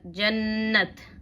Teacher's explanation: تجدید میں ایک قسم کی سختی ہوتی ہے، یعنی جس حرف پر تجدید آ جاتا ہے اس کو سختی سے پڑھتے ہیں، اور یہ عربی کا قاعدہ ہے کہ نون اور میم پر تشدید ہو تو غنہ ہوگا. غنہ یعنی ناک میں آواز کو چھپانا.